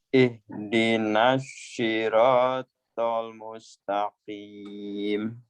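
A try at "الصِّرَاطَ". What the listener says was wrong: Itu jadi shin jadinya ya. Ihdinas shin. Sad, ihdinas syirat. Bukan, yang tadi yang jangan syah, tapi sad. Ihdinas syirat.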